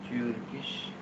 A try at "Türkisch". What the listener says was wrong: Ja, also U mit Umlaut. Türkisch. Nicht Turkisch. Türkisch.